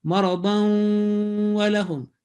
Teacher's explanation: This waw will carry in bracket the shadda, and then assimilation or joining will take place with shadda, applying the gunna sound for 2 seconds